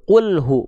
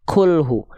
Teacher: Qul pakai qaf, nggak ada percikan nafas.